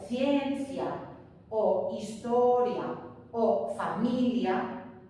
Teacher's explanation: ciencia o historia o familia no tienen la fuerza de voz en la vocal débil del diptongo